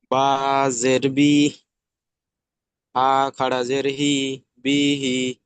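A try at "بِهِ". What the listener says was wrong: না, বাটা টান হয়ে যাচ্ছে, পিহি, পি টান হবে না, পিহি।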